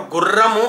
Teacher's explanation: గుర్రము అన్నప్పుడు ట్రిల్ ఎక్కువగా పలుకుతుంది అది కంపితం అక్కడ కొంచెం ఎక్కువగా పలుకుతుంది